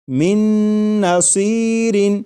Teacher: میم کے بعد نون مشدد جو ہے اس کی آواز آئے گی اور غنہ کے ساتھ پڑھیں گے۔